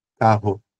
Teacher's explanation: Esse é o som de R, um R específico, R o R de Belo Horizonte, que é o R aqui de baixo, parecido com o R francês · Não é bem o R francês, que é um outro R, mas é um som glotal